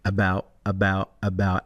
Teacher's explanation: now he's got a full glottal stop in the word about